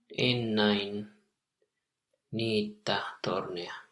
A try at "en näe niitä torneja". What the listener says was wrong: Yes, but not nine. en näe niitä torneja. Nä or näe, whichever you can hear.